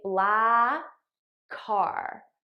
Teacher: I just eliminate one of the k sounds and I use it to link these two words together